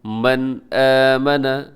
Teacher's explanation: من آمنہ، نون ساکن کے بعد آمنہ کی شروع میں حمزہ یہاں پر اظہار حلقی ہوگا یعنی آپ غنہ نہیں کریں گے، تیزی سے پڑھیں گے۔